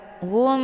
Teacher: bertemu dengan huruf ba itu dinamakan dengan Ikhfa Syafawi cara bacanya mimnya ditekan kemudian ditahan lebih kurang dua kali ketukan